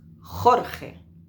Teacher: no vamos a notar una gran vibración, pero sí tenemos que notar que hay pues una fricción que raspa un poquito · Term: sonidos J